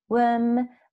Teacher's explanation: So sought is the past of seek, to worm, as when you say word is the same E sound, worm with the R not rolled